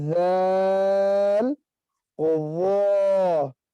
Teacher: پہلا وہ ہمیشہ باریک ہے، دوسرا ہمیشہ پر ہے. پہلا ہمیشہ باریک کیونکہ حروف مستعلیہ میں اور دونوں کا مخرج ایک ہے. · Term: پور باریک